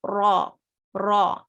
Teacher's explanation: when ra has a sign on top, either a fatha or dhamma, okay, ra becomes heavy, like full mouth. So we call it heavy, or we call it full mouth.